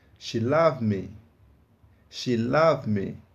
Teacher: o D quase que não foi pronunciado? Ele é bem baixo na hora da pronúncia, quase que não se ouve.